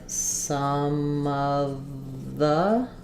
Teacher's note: get um all lighted together it sounds like some of the we don't really change any of these vowels but they're just going to be quick and and somewhat reduced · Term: reductions